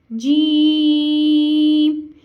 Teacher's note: जीम ज़बान के दरमियान और तालु के दरमियान से अदा होगा। ज़बान के दरमियान और तालु के दरमियान से जीम को हम अदा करेंगे और जीम को भी हमने 3 अलिफ की मिकदार के बराबर खींच के अदा करना है।